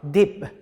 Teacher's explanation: 단어의 가장 마지막에서는 이렇게 소리가 나죠. 아까 말씀드렸던 것처럼 deep 이렇게 딱 멈추는 거. 약간 이렇게 unreleased라고 발음을 해야 약간 세련돼 보이긴 하죠. deep 너무 이래버리면 조금 촌스러워 보이죠 발음이.